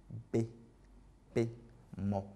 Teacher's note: Et ensuite avec les consonnes que j'ai classifiées, en fait les consonnes bilabiales, par exemple le B, le P et le M, voilà, sont des consonnes bilabiales. Bilabiales parce qu'elles font intervenir en fait les deux lèvres